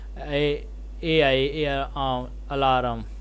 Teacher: The first syllable A is like the A in China, and the second syllable alarm rhymes with the words harm, charm, and calm. The stress is on the second syllable alarm.